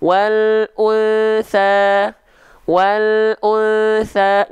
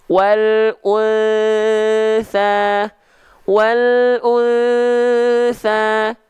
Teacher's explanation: samar dengungkan, ditahan 2 harokat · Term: ikhfa hakiki